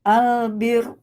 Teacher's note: kalau tipis mah bir tidak naik pangkal lidahnya, terus enggak ke belakang kan ya gusinya.